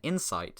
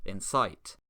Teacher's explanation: These are identical in every way apart from where the stress falls, so we call this phonemic stress.